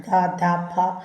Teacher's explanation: ഘോശ ശബ്ദം എന്ന് പറഞ്ഞാൽ ശബ്ദനാളം കമ്പിക്കുമ്പോൾ ഉണ്ടാകുന്നതാണ്